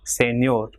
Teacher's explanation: For example, here the word ending in R, consonant, so it will be señor. So last syllable ñor will be stressed.